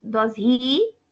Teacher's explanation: on the question T goes up like this it's does he this is a rising intonation it means you aren't sure uncertainty and you want to know the answer